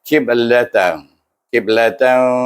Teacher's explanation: Ba qalqalah dengan qalqalah sugra sebab dia berada dalam tengah kalimah atau bertengah ayat yang kita baca.